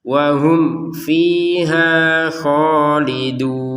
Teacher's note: Mim sukun bertemu fa dibaca dengan jelas